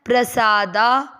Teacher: मतलब हुआ प आधा और र पूरा पी आर ए सा और दा दोनों अक्षर दीर्घ है उच्चारण में उसको रस्व से अधिक समय देना है